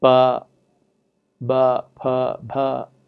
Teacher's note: In Punjabi, what we find is that, as well as in Dogri, the Indo-Aryan system of contrasts among the stop phonemes as voiceless unaspirated pa, voiced unaspirated ba, voiceless aspirated pa, voiced aspirated bha